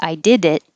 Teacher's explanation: now the D connects to the it.